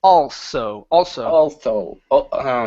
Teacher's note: instead of using a voiced s saying Alo okay it's an unvoiced S